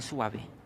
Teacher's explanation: aquí hay un diptongo UA, donde la U es cerrada y la A es vocal abierta